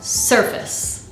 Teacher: right there in its spelling this word is not pronounced surface sir is the strong syllable